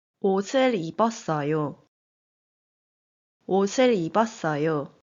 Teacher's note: Batchim 시옷 fills in for 이응 on next word to make the sound. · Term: linking sound